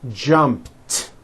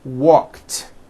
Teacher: jumped with a t sound at the end jumped of course the word is spelled with an e d ending it's just pronounced as a t